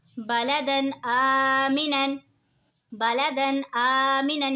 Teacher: बलदन आमिनन, बलदन आमिनन, यहाँ पे देखें जी दो ज़बर हैं, दो ज़बर की तनवीन के बाद हुरूफ़े हल्की का हमज़ा आ रहा है तो इज़हार होगा यानी गुन्ना नहीं करेंगे। दो ज़बर की तनवीन को हमने बिल्कुल ज़ाहिर करके पढ़ना है।